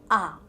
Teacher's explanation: mouth will be opened and lips are neutral in position the lower jaw comes down tongue movement is relaxed and low in position as possible